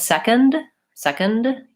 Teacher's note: you can hear that I release that D sound second but when I say secondly instead of releasing the D · If I said second, second, you can hear that I release that D sound,